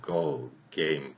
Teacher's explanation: 그래서 기억 같은 경우에는 그 발음이 좀 목젖이 울리죠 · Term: 목젖이 울리는 소리